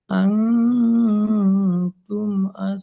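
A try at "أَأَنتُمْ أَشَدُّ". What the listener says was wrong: নয়, দুটো হামজা যাবার আ আছে দেখেন। আ আ তুম।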